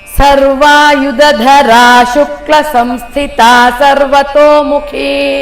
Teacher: ಸರ್ವಾಯುಧರ ಅಲ್ಲಿ ಡೌನ್ ಬಂತು, ದೀರ್ಘ ಬಂತು. ಶುಕ್ಲ ಅಲ್ಲಿ ಶಾರ್ಟ್ ಆಗಿ ಬರಬೇಕು, ಶುಕ್ಲ ಬರಬಾರ್ದು.